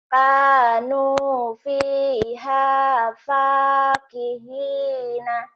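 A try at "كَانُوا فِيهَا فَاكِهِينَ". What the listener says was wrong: Ini lagunya dari mana dapatnya? Kanu fakihina. Jangan lagu gitu. salah, cuman lagunya kayak leler-leler gitu ya. Kayak orang main lagi nyemprot air, nyemprot bunga, tapi selangnya dipijit-pijit.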